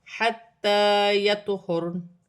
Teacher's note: تو ساکن ہے، تو حروف قلقلہ میں سے ہے، قلقلہ کے ساتھ ادا کیا جائے گا